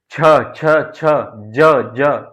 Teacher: जिन वर्णों का उच्चारण करते समय जीव का मध्य भाग तालु को स्पर्श करता है तो उन्हें तालव्य व्यंजन कहते